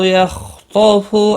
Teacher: خا اور طا دونوں مستعلیہ ہیں، پر پڑے جائیں گے